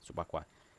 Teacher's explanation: A sílaba mais forte é a antepenúltima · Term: proparoxítona